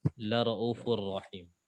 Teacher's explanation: Untuk syubah, waw maddiyahnya dihapus.